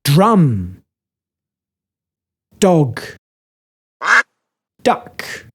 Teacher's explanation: It comes from our neck and sounds like a drum. It can't stretch into other sounds because we can't hit drums slowly. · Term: the drum sound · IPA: /d/